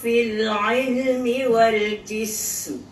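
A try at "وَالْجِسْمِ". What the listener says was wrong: Jangan kapit mulut kan. Waljis.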